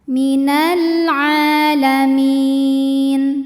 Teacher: Karena ain barisnya fathah panjang maka ain ini panjang dua harakat.